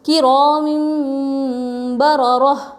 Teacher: تنوین کے بعد با آئے تو نون کو میم سے بدل کر غنہ اور اخفا کے ساتھ پڑھیں گے